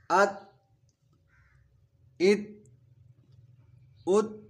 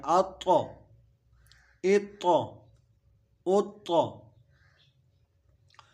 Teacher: طا چونکہ حروف قلقلہ ہے تو اس پہ آواز واپس لوٹتی ہوئی محسوس ہوتی ہے